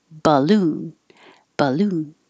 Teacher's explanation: it changes to ba and that means it also gets shorter duration